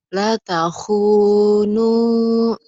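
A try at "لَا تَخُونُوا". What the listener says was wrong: Panjang lahnya.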